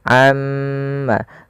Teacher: pada lafal amma ta'malun, tahan pada bunyi ma. Amma, karena pada lafal tersebut ada yang dinamakan dengan bacaan gunnah.